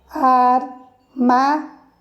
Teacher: a sílaba mais forte é o má. Então, se eu contar, ela vai cair na antepenúltima.